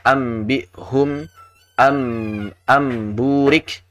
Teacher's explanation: mengubah suara nun sakinah atau tanwin tersebut menjadi suara huruf mim, mim murni